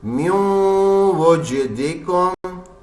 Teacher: नून की आवाज नहीं आ रही गुन्ने की आवाज आ रही है